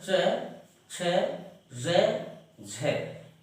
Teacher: तो इनमें ध्यान देंगे हम कि इस लाइन के प्रत्येक वर्ण को हम कहाँ से बोलते हैं, च, छ, ज, झ। यानी हमारे जो ऊपर के जो दांत हैं उनसे थोड़े आधा इंच ऊपर, आधा से भी कम, वहां पर हमारी जीभ एक ही जगह लगती है। ठीक है, तो जहां से ये लाइन बोली जाती है उसी जगह से इसका उच्चारण होता है। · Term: तालव्य